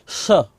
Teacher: दूसरा स होता है ये बोला जाता है मूर्धा से